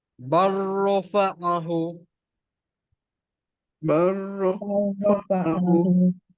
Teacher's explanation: Okey, seterusnya. Lam bertemu ro juga. Kita abaikan huruf lam, pergi terus huruf yang ro.